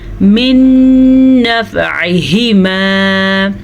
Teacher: نون ساکن کے بعد یمون میں سے نون آیا ہوا ہے تو ہم ان دونوں کو آپس میں ملا کے غنّے کے ساتھ پڑھیں گے کیونکہ یہاں پہ ادغام بالغنہ کا قاعدہ ہو رہا ہے۔